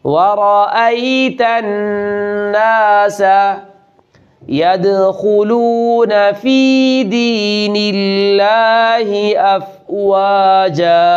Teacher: یہاں نون مشدد پر غنہ کرنا ہے